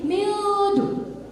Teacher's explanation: Masih ada di bagian depan lidah kita. Tapi karena dihukumi dengan ikhfa, nun mati bertemu dengan da atau dal, jadinya mildu. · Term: ikhfa akrab